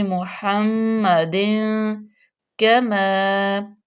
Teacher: آگے، یہاں پہ فا کا قاعدہ لاگو ہو رہا ہے تو یہاں پہ ہلکا غنہ کریں گے، ناک میں آواز کو لے کے جائیں گے